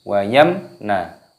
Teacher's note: ini hukumnya dibaca idhar syafawi. Jadi dibaca jelas, tidak boleh berdengung.